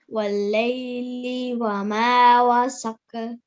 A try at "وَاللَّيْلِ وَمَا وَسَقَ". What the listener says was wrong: Okay, be careful, yeah? There is a tashdid there, yeah? So press down, okay? وَاللَّيْلِ وَمَا وَسَقَ.